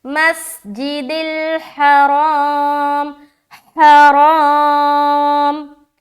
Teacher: ہا نکالنا ہے، را موٹا رکھنا ہے، موٹا رکھتے ہوئے الف مدہ کرنا ہے